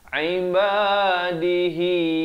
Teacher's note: Hi itu kena panjang 4 atau 5 harakat ya, maksilah tawilah di situ.